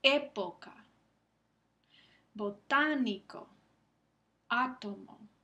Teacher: Y la última categoría son las esdrújulas, que son mucho menos frecuentes que las agudas y las llanas. Y eso es cuando el acento prosódico se encuentra en la antepenúltima sílaba